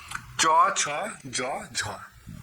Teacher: এই ধ্বনি উচ্চারণের সময় শুরুতে সম্পূর্ণ বাধা প্রাপ্ত হবে এবং শেষের দিকে আংশিক বাধা প্রাপ্ত। এই শুরুতে সম্পূর্ণ বাধা এবং শেষে আংশিক বাধা। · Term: গৃষ্টধ্বনি